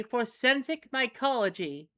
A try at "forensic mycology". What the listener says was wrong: You mean forensic mycology. I think you said for sensic. No, forensic.